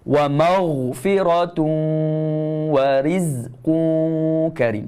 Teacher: Huruf ghain. Hujung halkum makhraj dia. Ghain ni kena baca tebal. Tak boleh berangin.